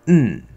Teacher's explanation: potentially in can reduce to un that's the point here or it can maybe even just reduce all the way to um we can eat that vowel